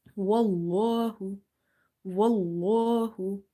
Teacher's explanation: In the word Allah, lam is sometimes heavy and sometimes it's light. So if you see there is a fatha before it, you make this lam heavy